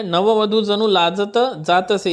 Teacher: जणू या शब्दातील नू हा जरी ऱ्हस्व असला परंतु काव्य वाचनाच्या ओघात तो दीर्घ उच्चारला जात आहे, म्हणून त्याला सुद्धा गुरु मानायचं.